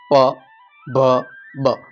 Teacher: પ ભ બધામાં હોઠ નો ઉપયોગ થાય છે એટલે ઓષ્ટય છે